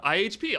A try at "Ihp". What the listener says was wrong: Ip. Yeah, you don't pronounce the individual letters. Don't worry, you're not the first person to do that.